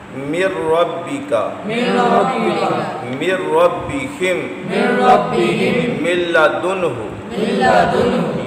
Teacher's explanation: نون ساکن یا تنوین کے بعد یرملون میں را لام آئے تو غنہ نہیں کرنا